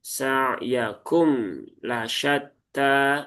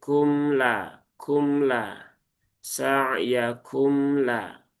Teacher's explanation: Maka pastikan mimnya itu dibaca dengan cara izhar ya. Mim punya sifat tawas. Maka cara membaca izhar pada huruf mim ya tunaikan tawasudnya bukan diubah menjadi syiddah. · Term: izhar syafawi